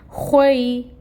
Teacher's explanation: پھر خوا ہے، خوا حروف مستعلیہ میں سے ہے. خوا کی خراش کو واضح کریں گے اور اس کو پر پڑھیں گے. · یا لین ہو رہا ہے یہاں پر کیونکہ یا ساکن ہے اور اس سے پہلے فتحہ کی حرکت ہے